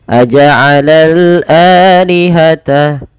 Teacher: alif lam yang tertulis dan dibaca dengan lam, dibaca dengan jelas suara lam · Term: alif lam qamariyah